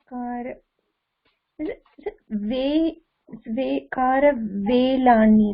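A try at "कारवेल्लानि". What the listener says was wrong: Karavellani, double L, Karavellani.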